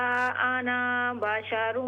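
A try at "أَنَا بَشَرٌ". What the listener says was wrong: कुल इन्नमा अना, नून ज़बर न, अलिफ को छोड़ दें। कुल इन्नमा अना बशरुम मिस्लुकुम।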